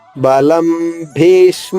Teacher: పప్ప బాబ ఈ నాలుగు అక్షరాల్లో ఏదివచ్చినా గానీ అనుస్వరం ఉచ్చారణ మ అవుతుంది